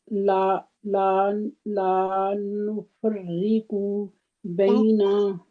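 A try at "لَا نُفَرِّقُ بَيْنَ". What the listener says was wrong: ला नुफर्रिकु, हरकत को खींचना नहीं है।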